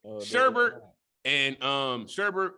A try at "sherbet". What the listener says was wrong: And it's not even called sherbet. It's sherbet. There's no extra R in there.